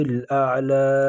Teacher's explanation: اعلی ایک الف کی مقدار اس کو بھی کھینچیں گے